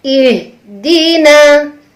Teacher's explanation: Nun huruf tipis berbaris fathah. Bunyinya na. Dibuka mulut kita.